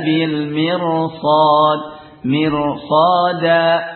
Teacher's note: Ini karena kalau pada irsada mirsad ini juga sebelumnya kasrah, tapi di depannya adalah huruf isti'la dan itbaq dari sad ya, huruf sad yang isti'la dan juga itbaq ya. Maka ra-nya di sini dibaca tafkhim karena sebab huruf isti'la yang jatuh sesudahnya.